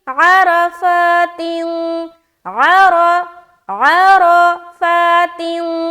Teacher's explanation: रा को मोटा और फा में खींच रहे हैं, रा के ऊपर जबर है इसलिए मोटा।